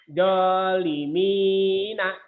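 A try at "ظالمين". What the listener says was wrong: Zoknya kurang rapuh. Zok. Zalimin. Zok.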